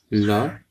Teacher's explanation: ला में भी हमारी जीभ मुख के ऊपर वाले हिस्से को छूती है